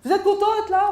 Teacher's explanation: j'ai montré que j'étais quelque part pas contente dans la façon de le prononcer. Et donc, ma voix a monté. Donc, on appelle ça la prosodie, en fait.